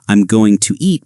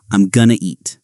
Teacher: Another common connection is going to, which becomes gonna.